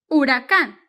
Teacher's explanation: the H is silent in Spanish so it doesn't have a sound